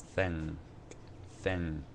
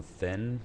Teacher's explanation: That's like an N with a little bit of a G or a K attached to it.